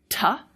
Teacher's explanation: we've put our tongue on the alveolar ridge. If you put your tongue on your top teeth and back it up and stop the air and release it, T, you will get a T.